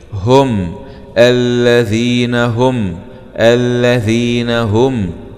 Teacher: ناء الذين الذين، هاء ضمه ميم سكون مع الإظهار الشفوي هم، لما نجد الميم عليه سكون يبقى في حكم الإظهار الشفوي